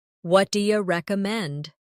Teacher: Notice how do you becomes dia in casual conversation.